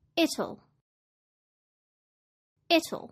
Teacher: British English speakers may use an aspirated t and say it'll